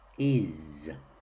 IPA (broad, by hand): ɪz